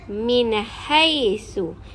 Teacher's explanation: huruf-huruf izhar halqi ialah Hamzah ha ha dan juga ya jadi Nun dan tanwin ini dibaca dengan jelas dan nyata tanpa ada dengung